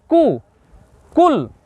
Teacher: আর জিহ্বার গোড়াটা থেকে সামনে এগিয়ে এসে উচ্চারণ হবে